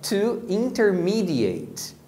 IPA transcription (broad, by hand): ˌɪntəˈmiːdɪˌeɪt